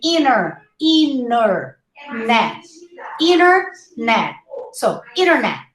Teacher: try not to pronounce the T. It's a very subtle sound. You say inner, net.